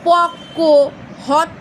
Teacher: যুগ্ম ব্যঞ্জন কিন্তু দ্বিত্ব রূপে উচ্চারিত হয়, মানে জোড়ায় উচ্চারিত হয়।